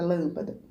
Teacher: Lâmpada é a antepenúltima sílaba, que é a acentuada